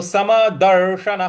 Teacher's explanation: न के बाद जो विसर्ग है उसके आगे कुछ नहीं है इसलिए उसका ह उच्चारण करेंगे